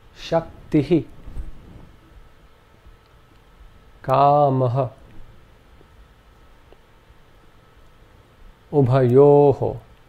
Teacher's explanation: this is simply an aspirate, where the breath is expelled in a very short burst along with the preceding vowel sound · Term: visarga